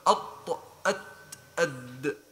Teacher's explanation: تخرج من طرف اللسان مع أصول الثنايا العليا